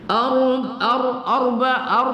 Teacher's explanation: Ar kita baca tafkhim pada ro berbaris sukun